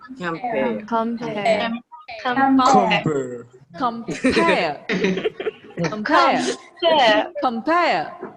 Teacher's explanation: So before the stress, do not give much energy.